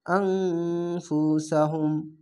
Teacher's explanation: এখানে ইকফা গুন্না, বাংলা অনিষ্কারের মতো গুন্নাটি হবে